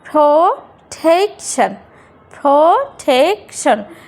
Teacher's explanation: তো আমরা এখানে যে ইটা আছে প্রোটেকশন, প্রোটেকশন, প্রোটেকশন, টেকশন, শন, এই শনটার এই যে প্রোটেক, এই যে টিটা আছে, টিটা হচ্ছে ডবল সিলেবল, ডবল স্ট্রেচ, এর জন্য হবে কি প্রোটেকশন, প্রোটেকশন। শুরুতে পি, পি এর উচ্চারণ এখানে প না হয়ে ফ হলো এবং টেকশনের ক্ষেত্রে ট না হয়ে ঠ হলো।